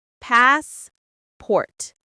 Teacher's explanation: The stress is on the first syllable. Passport. The a sound is long like in car.